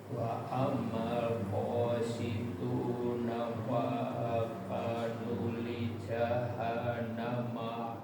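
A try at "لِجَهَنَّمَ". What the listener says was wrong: Ditahan sedikit lagi di jahan.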